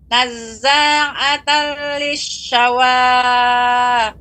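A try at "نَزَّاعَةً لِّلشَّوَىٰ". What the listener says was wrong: 2 harokat saja Ibu.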